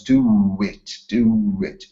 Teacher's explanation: This sound w is intruded here in the middle of the two vowel sounds.